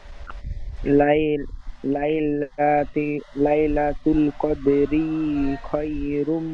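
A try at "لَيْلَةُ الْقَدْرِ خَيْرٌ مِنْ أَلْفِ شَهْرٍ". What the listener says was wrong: কদরি বলে রয় টান দিচ্ছেন, যাবার জের পেশে একটু টান হয় না, খেয়াল করে পড়তে হবে। লাইলাতুল কদরি খায়রুম মিন আলফি শাহর। আলফি শাহর বলে টান দিচ্ছেন, এখানে কোনো মাদ্দা হবে না, টান হবে না। আলফি শাহ, শাহ, শাহ, তারপরে রটি হালকা ভাবে রর আকৃতি করেন। আলফি শাহ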